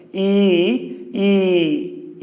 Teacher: বলতে গেলে জিহ্বাটা একটু উপরের দিকে উঠে যাচ্ছে, তালুর দিকে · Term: উচ্চ স্বর